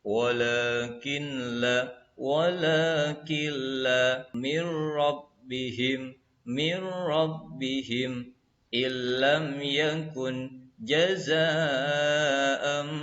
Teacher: nun sukun atau tanwin dilebur dan dibaca tidak dengung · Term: idgham bila gunnah